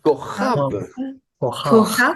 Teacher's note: on n'est pas habitué à prononcer une occlusive suivie d'une fricative gutturale